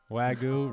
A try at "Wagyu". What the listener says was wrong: You gotta pronounce it with like 2 syllables. Wagyu.